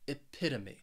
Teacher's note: this word has four syllables and the stress is on that second syllable that that pit epitome and what this means is that that